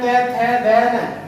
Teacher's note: ये हमारे दंत से प्रस्तुत होते हैं, अर्थात दांतों से टच होकर ये बोले जाते हैं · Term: तै वर्ग